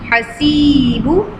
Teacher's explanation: ya madda is there, so we'll read it one time long